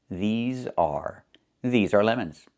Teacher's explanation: Make sure you make the long e sound like green beans. These plus the z sound like in zebra and zipper. Z with a voice.